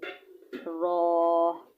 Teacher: जबान की नोक मुकाबल के तालू से अदा होता है